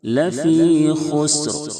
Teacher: خا کو ہمیشہ موٹا کریں گے کیونکہ خا حروف مستعلیہ کے 7 حرفوں میں سے ہے. سین ساکن ہے، پتلی سیٹی جیسی آواز نکلنی چاہیے.